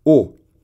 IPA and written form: o (eaux)